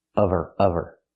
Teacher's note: the h is silent. Because there's no consonant, we need the v sound.